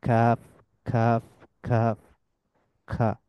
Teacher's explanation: তালুর শক্ত অংশ যেটা, ওইটার সাথে জিহ্বার পেছনের অংশ যুক্ত হয়ে উচ্চারিত হয়